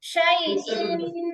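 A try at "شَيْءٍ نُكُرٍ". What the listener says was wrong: আপু এই যে শাই, শাই ইন হামজা কিন্তু স্পষ্ট হবে, শাই ইন এরকম ইয়ার মতো হবে না।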